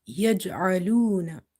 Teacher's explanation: Ain is from the middle of the throat and it's a bit squeezing sound.